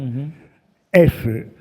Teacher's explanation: En el taíno no existía el sonido que representamos con la letra F. Labiodental fricativo sordo